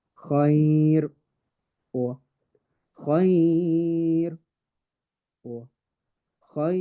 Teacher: the reader can prolong the lean to 2, 4, or 6 harakas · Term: mad al-lin